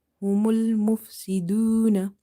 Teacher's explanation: Waw is madda, so you will give it a stretch up to one alif.